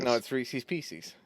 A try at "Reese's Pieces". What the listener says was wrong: No, that you're saying Reese's Feces.